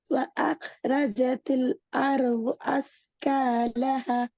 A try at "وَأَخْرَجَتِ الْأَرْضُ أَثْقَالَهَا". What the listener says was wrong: அஸ்காலஹா என்கிறது பிழை. கடைசியில ஹாவை நிறுத்தணும்.